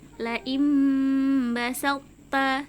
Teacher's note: Jadi huruf po di sini biasanya kalau sukun kan qalqalah atau memantul, basal po ta, seperti itu. Tapi karena bertemu dengan huruf ta yang sama makhrajnya, jadi tidak perlu dipantulkan. Cara membacanya langsung diidghamkan ke huruf ta-nya.